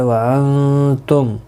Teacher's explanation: یہاں پر اظہار شفوی ہوگا، گنہ نہیں کریں گے